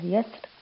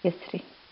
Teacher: والكلمة الأخيرة وهي كلمة يسر، فيجوز فيها أيضا الوجهان لكن الترقيق أولى، ممكن في حال الوصل أو في حال الوقف، وقفت عليها يسر أو وصلتها يسري.